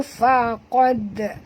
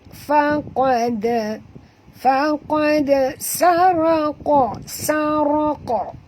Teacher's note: huruf dal mati di tengah-tengah kalimah, kita kena lantunkan dia qalqalah sughra